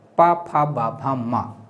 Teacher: पु अर्थात पा वर्ग, पा, फा, बा, भा, मा और उपधमानी अर्ध विसर्ग से युक्त पा और फा का उच्चारण स्थान ओष्ठ से होता है